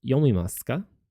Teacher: To make it a question, we add the particle ka to the end of the sentence, and we say it with a rising intonation.